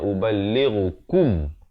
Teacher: Kaf baris dhammah bukan bunyi ko. Kaf baris dhammah bunyi ku.